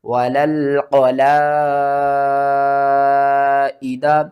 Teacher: مد متصل ہے، قرآن پاک میں یہ بڑی مد بھی کہلاتی ہے، اس کو آپ نے 5 الف کے برابر کھینچ کر پڑھنا ہے۔